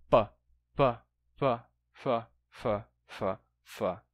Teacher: um p deixa de bloquear a passagem do ar totalmente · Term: lenição